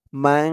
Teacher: লাইনে দেখুন ইকফার 15 হরফের এক হরফ শিন আসছে তাই এখানে ইকফা অর্থাৎ নাকের ভিতরে লুকিয়ে গুন্না করে পড়তে হবে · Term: ইকফা গুন্না